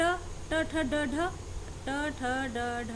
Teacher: मूर्धन्य यानी मूर्धा, मसूड़ा बोले तो अपनी भाषा में, कि जब हम किसी वर्ड को बोलते हैं, उच्चारण करते हैं, तो हमारी जो जीभ होती है ना, वो मूर्धा से टकरा जाती है, और मूर्धा से टकरा के तब हम उन वर्णों को वापस से बोलते हैं, इसीलिए हम इन्हें मूर्धन्य कहते हैं।